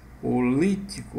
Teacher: O acento está na antepenúltima sílaba. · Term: proparoxítona